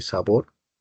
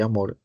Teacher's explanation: la sílaba tónica de sabor es bor, y la sílaba tónica de amor es mor